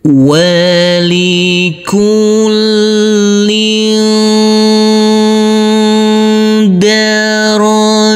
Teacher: Huruf lam yang berkasrah tanwin ini yang bertemu dengan huruf dal, maka tanwinnya kita baca dengan samar-samar karena ini adalah bacaan ikhfa.